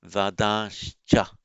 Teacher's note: By Sandhi, where you get a final N followed by a Ch or a Cha, aspirate or non-aspirate makes a difference. You change the final N to Anuswara plus the Sha, the palatal Sha.